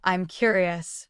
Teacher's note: When you say, I'm curious, the voice goes up.